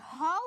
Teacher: যখন আমি হ উচ্চারণ করছি তখন কিন্তু একটু বেশি বাতাস লাগতেছে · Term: মহাপ্রাণ